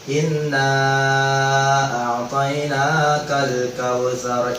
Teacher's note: Ada nun tasydid berdengung 2 harokat, hukumnya gunnah musyaddadah.